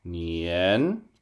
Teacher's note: it sounds like I'm singing this word nian because you do want to go up.